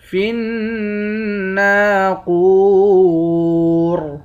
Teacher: آخر میں را ساکن ہے، اس را کو موٹا پڑھیں گے